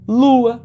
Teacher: nós temos duas vogais, no caso, uma vogal e uma semivogal em sequência que forma um ditongo